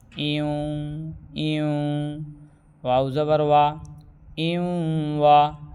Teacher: تنوین اور نون ساکن کے بعد واو آئے تو تنوین اور نون ساکن کی آواز ناک میں آئے گی اور غنہ ہوگا